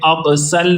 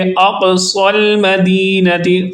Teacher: صاد کو پر پڑھیں گے، سین جیسی آواز نہیں نکالیں گے، اقصل نہیں کریں گے بلکہ اس طرح پڑھیں گے اقصى المدینۃ، صاد کو پر آواز میں یعنی موٹی آواز میں پڑھیں گے۔